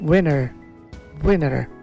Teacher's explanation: দেন উইন্টার, American উইনার। আর টি উচ্চারণ করছে না, উইন্টার না করে উইনার মানে বিজয়ীর যেমন উচ্চারণ, আর এই শীতকালের উচ্চারণ তেমন আমেরিকান ইংলিশে উইনার।